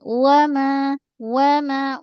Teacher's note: Bila kita sambung huruf alif depan mim tu tidak dibaca mad dah. Terus satu harakat